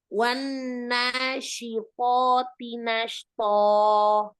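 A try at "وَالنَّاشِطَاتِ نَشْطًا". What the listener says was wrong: To pertama dengan to kedua samakan tebalnya. Jangan disebar. Jangan ditekan nunnya, biasa saja. Wanashi. Jangan terlalu kuat menekan nun tasdid.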